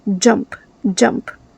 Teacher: when you pronounce a word that begins with J, you add a very soft D. So, not jump, jump.